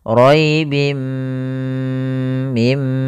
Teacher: memasukkan tanwinnya ke mim dan ditahan gunahnya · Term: idgham bighunah, idgham bi gunnah